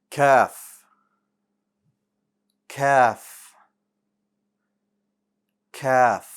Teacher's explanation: The letter Kaf is a light letter. It means the back of your tongue is going to stay flat.